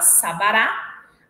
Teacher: a primeira vogal tem acento secundário, a segunda vogal é isenta de acento e a terceira tem acento primário